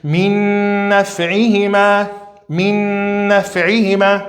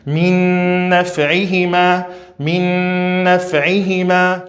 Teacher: A gente vai pronunciar esse nun e a gente vai fazer som nasal, gunna. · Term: idgham com analisação